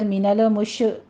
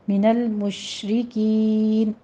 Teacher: count کرنا ہے، من المشرکین، ادھر من المش ایسے نہیں کرنا، قلقلہ نہیں کرنا، لام کو بھی سٹاپ کیجئے، شین کے اوپر تفشی پیدا ہوگی ، آپ نے اس کو رکنا ہے تھوڑا سا، من المشرکین،